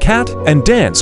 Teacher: the sound in words like cat and dance can be pronounced with a more open-mouth position